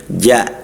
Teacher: ja harus jahar dia. Jahar dan syiddah harus kuat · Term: huruf jim